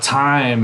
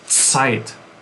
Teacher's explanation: English will say a T or a D, and German will say a ts or a z. So like time in English is Zeit.